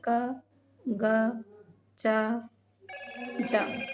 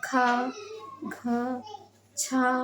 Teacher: महाप्राण जिसमें ज्यादा हवा से हम बोलते हैं।